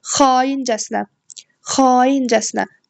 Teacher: A uzanır. Deməli vurğu da sonunca. Yəni xaincəsinə sona düşür.